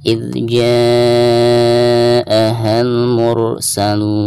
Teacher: dihukumi mad wajib mutasil dan dibacanya bisa 4 atau 5 harokat